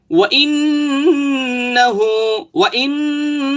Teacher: প্রায় এক আলিফ পরিমাণ ধরে রাখলাম, ওয়াইন্নাহু, এই যে ইন, ইন নাকে বাজাইলাম, নাকে বাজাইছি না, এটা কি বলা হয় ওয়াজিব গুন্নাহ।